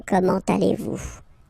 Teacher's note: it's a question, so raise a little bit your voice at the end